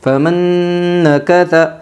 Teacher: یمن کے 4 حرفوں میں سے نون آئی ہے، اس لیے نون ساکن کو غنہ کے ساتھ ملا کر پڑھے گے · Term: ادغام مع الغنہ